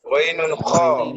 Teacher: Tenggorokan paling atas hurufnya adalah ghainun kha.